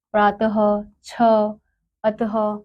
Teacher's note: इसे विसर्ग कहते हैं इसका उच्चारण ह ध्वनि के रूप में होता है